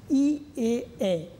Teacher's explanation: ই এ এ জিহ্বার কিন্তু অবস্থান একেবারে সামনে, তাই সম্মুখ স্বরধ্বনি